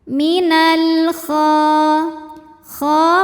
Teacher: Minal kha mad tabi'i muqaddar karena huruf kha berbaris fathah panjang, maka dibaca panjang kha-nya 2 harokat